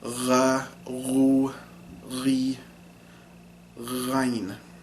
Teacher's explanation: Now ghayn is voiced. As you can hear, there's a lot of vibration going on in the throat. So this is kind of the sound people make when they gurgle water.